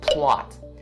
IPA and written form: plɑːt (plot)